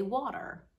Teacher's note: sometimes it sounds like what we call a flap T